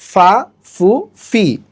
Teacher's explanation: উপরের দাঁতের সাথে নিচের ঠোঁট লাগবে। ফা জবর ফা, ফা পেশ ফু, ফাজের ফি, ফা ফু ফি, কিছুটা ইংরেজি এফ বর্ণের মতো।